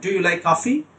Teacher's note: আর যখন আপনি প্রশ্ন করছেন বা ইয়েস নো কোয়েশ্চেন করছেন তখন এটার জায়গায় রাইজ হবে, যেমন ডু ইউ লাইক কফি or ডু ইউ লাইক কফি, আপনি কিন্তু রাইজ করলেন, ভয়েসে ইন্টোনেশনটা রাইজ করলেন